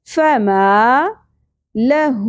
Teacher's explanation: ما زبر کے ساتھ الف حرف مدہ ایک الف کے برابر